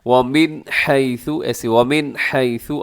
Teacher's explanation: جب بھی نون ساکن کے بعد یہ حروف حلقی آ جائیں، اب یہاں پہ اظہار کیجیے گا، غنہ نہ کیجیے گا، آواز کو ناک میں نہ لے کے جائے گا